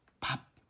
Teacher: 그 다음에 여기 세로와 관련된 것은 방법인데 처음에 파열음, 붙였다가 떨어뜨리는 의미죠.